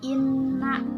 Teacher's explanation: Yang pertama, inna. Nah, ini ada nun bertasdid dibaca gunah